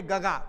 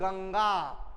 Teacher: या अनुस्वाराचा स्पष्ट आणि खणखणीत उच्चार या ठिकाणी होत आहे. म्हणून या ठिकाणी गंगा हा शब्द या ठिकाणी स्पष्ट खणखणीत उच्चाराचा आहे, म्हणून ते अनुस्वार होईल.